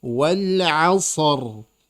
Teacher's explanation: Rnya ditebalkan karena sebelumnya sukun.